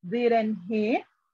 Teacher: Use a falling intonation, your voice goes down when you are sure of the answer and are asking someone to agree with you.